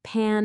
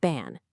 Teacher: The only difference there is that tiny puff of air, the phone that separates the p and b sounds.